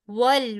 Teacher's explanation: واؤ پورے ہونٹ گول کر کے اور لام آگے ساکن ہے اس کے ساتھ ملا دیں گے